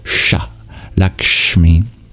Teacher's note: It's a similar sounding sibilant, but instead of arching your tongue up like we normally do to pronounce it, we curl our tongue back, and that's the retroflex sibilant